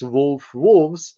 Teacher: That was actually the regular pattern from Old English when f is in the intervocalic position, not at the end of the word, it becomes v